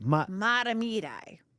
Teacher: That T is a D every time. It's not mat.